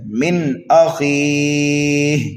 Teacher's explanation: تو مد عارض کو 1 2 3 الف کے برابر کھینچ کر کے پڑھتے ہیں